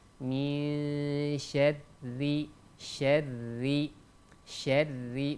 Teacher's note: huruf ro di sana dibaca tipis karena huruf ro di sana berharokat bawah. Setiap huruf ro ketika berharokat bawah atau berbaris bawah maka ditipiskan.